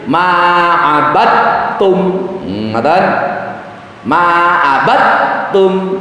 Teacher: taknya dibaca tebal, seperti di situ ada tasdid